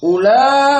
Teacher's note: maka di sini ula ada mat tabi'i ditambah hamzah ika, ulai, maka dia fi nafsil kalimah kasamai, fi nafsil kalimah.